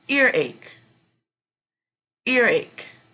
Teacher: the strong syllable will go over ear